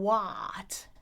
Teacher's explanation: they often say what and their jaw is just too open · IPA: /wat/